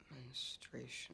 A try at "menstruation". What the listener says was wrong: You're saying it like you're scared. Don't say it like you're scared. Say it like it's normal.